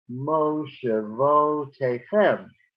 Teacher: The mo and the vo, those are secondary accents, and it's the meteg that tells us to do that.